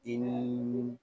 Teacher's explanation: हमज़ा नून ज़ेर इन, यहाँ नून मुशद्दद है और नून मुशद्दद में हमेशा गुन्ना होता है, लिहाजा इसको हम गुन्ने के साथ पढ़ेंगे